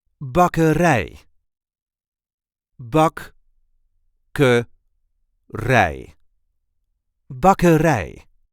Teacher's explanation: here the emphasis is on the last syllable